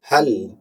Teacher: lam merupakan huruf al-bainiyah, yaitu dia tidak tertahan suara, juga merupakan huruf yang tidak mengalir suara secara sempurna, namun dia berada pada level di tengah-tengah.